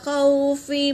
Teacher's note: خو میں واولین ہے، اسے جلد پڑھیں گے۔